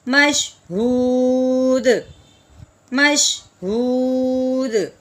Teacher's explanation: ہاں جی آخر والا حرف ساکن ہوا تو ساکن کون سا حرف تھا؟ دال، دال حرف قلقلہ میں سے تھا، اس لیے اب ہم نے حروف قلقلہ کو وقف کی صورت میں ہلا دیا